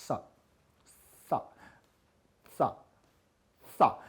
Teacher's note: जब हम इसका उच्चारण करते हैं तो हमारी जिह्वा का अग्रभाग है, जो जीभ का आगे का भाग है, यह पीछे से आकर के दोनों दांतों में पीछे से क्या है जोर लगाता है, और हमारे दोनों दांत क्या हो जाते हैं, ऊपर नीचे के दांत हमारे क्या हो जाते हैं, बंद हो जाते हैं, और बोलते हैं सा सा सा सा। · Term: दंतीय सा